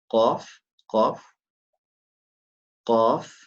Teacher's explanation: So the qaf comes from the deepest part of the tongue.